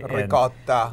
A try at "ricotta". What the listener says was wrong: Ricotta? Ricotta cheese? Yeah, a little bit more A in there.